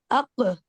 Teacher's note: और जिसको हम उर्दू में जो खा की आवाज है अक अक अक बहुत एग्जाजरेशन के साथ तो नहीं कि बहुत ही आप एयर रिलीज कर दे लेकिन वो जो थोड़ी सी एयर रिलीज है वो काफ के साथ की जाती है ताकि उसकी आवाज अदा हो। तो कौफ की आवाज की अदायगी के लिए कलकला करते हैं। अक इस तरह से और काफ की अदायगी के लिए हमस यानी ए रिलीज करते हैं।